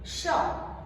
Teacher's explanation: और जब हम श बोलते हैं तो हमारी जुबान मुड़ जाती है, श। तो ये उच्चारण भी आप सही कर सकते हैं, स और श का।